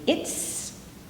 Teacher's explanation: will have that but if you say it's a nice day it's the T doesn't vibrate so you don't need to vibrate the S